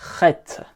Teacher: il faudra essayer de bien insister au niveau de la gorge pour prononcer cette lettre